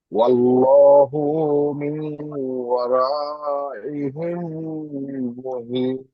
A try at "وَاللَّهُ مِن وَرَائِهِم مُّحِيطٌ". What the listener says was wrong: আল্লাহু, এই হুটা একটু টান হয়ে যাচ্ছে। আল্লাহু মিউ, আল্লাহু মিউ। এখানে গুন্না হচ্ছে কেন বলুন তো?